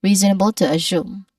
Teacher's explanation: Make sure assume has a smooth but rising tone on the second syllable.